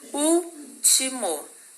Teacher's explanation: O último também é uma proparoxítona, né, gente? O U é a sílaba mais forte e ela foi acentuada corretamente na regra das proparoxítonas também.